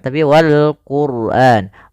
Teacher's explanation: ra di sini ra tafkhim yaitu ra tebal. Jangan dibaca wal Qur'an tapi wal Qur'an.